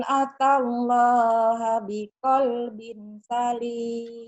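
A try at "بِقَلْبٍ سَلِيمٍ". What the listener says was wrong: Binnya bukan idhar tapi ikhfa. Biqalbin bindeng. Kan ikhfa, biqalbin ada angnya. Tapi jangan ang banget. Biqalbin ada n-nya tapi ang. Biqalbin salim. Ini namanya ikhfa ya. Kayak ini kalau ilaman idhar. Ilaman atallaha biqalbin salim.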